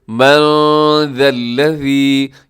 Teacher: یہاں نون ساکن ہے، نون ساکن کے بعد ذال ہے تو آپ یہاں اخفا کیجیے گا، ذَا الَّذِي، اس میں ذال کو اپنے نرمی سے پڑھنا ہے، اسے زا نہیں پڑھنا آپ نے۔